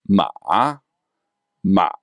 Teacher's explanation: the sound distinctively goes down then up, something like this. Ma, ma. So there's sort of a little jump in the middle. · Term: third tone